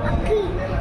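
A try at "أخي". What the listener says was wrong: টান হবে না আখি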